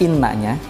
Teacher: khususnya huruf nun yang bertasydid ditahan dua harokat